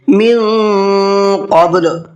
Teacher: قاف کو پر کر کے پڑھیں گے، منہ بھر کے پڑھیں گے اور با کے اندر قلقلہ کریں گے، قب قب، اس طریقے سے قبل۔